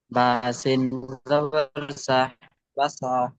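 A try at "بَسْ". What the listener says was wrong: বাসা নাই, বাসা বলছেন কেন? আপনি বুঝতে পারেননি পড়া? হ্যাঁ, এই এটাকে কি বলা হয়? এটাকে কি বলা হয়? সাকিন, জজম, সুকুন সব বলা হয়, সাকিনটাই বেস্ট। এটাকে সাকিন বলা হয়।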